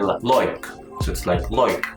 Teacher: But in Australia they would say like. So it's like loik. It's more like a O sound.